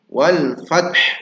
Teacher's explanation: Nah fat saja padahal ada huruf ha di situ.